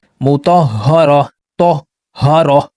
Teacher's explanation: جب ہم اس کے اوپر سانس توڑتے ہیں تو اس کو ہا پڑھتے ہیں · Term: تائی مربوطہ